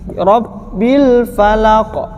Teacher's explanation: roknya ro mufakhamah, tebal